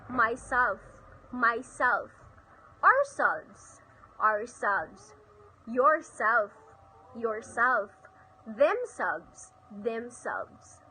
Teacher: stress the self or selves in reflexive pronouns